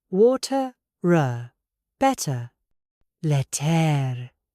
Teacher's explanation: This is called a rhotic accent. The tongue curls back to make the R sound.